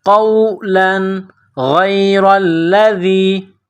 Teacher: تنوین کے بعد غین ہے، حروف حلقی ہے، تو یہاں تنوین پر غنہ نہیں کریں گے۔